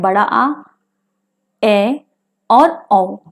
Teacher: विवृत स्वर को बोलने में हमारा मुंह अधिक खुलता है